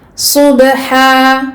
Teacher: sad mufakhama, et ba pour laquelle il y a qalqala